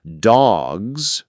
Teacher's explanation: In dogs, the s sounds like a soft z.